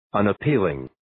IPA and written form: ,ʌnʌ'pilɪŋ (Unappealing)